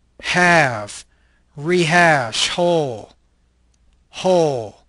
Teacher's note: This is a glottal, fricative, voiceless consonant.